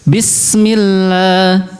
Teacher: sin itu dia memiliki sifat sofir, ya. Jadi harus agak mendesis gitu.